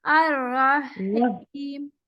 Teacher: اور رحیم نہیں ہی نہیں رحیم نرمی سے صرف سانس سے پڑھنا ہے. الرحیم. رحیم نہیں ہی نہیں رحیم.